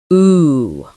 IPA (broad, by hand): uː